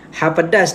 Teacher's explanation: sebutan dia berada di bahagian tekak di bahagian halum Ok kedudukan dia berada di tengah-tengah bila nak sebut ha pedas